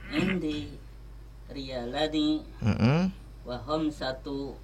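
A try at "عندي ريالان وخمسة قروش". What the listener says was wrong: Kurusin, betul ya.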